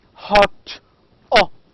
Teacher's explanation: this is a a low back vowel · the sound in o, hot, can be also described as low back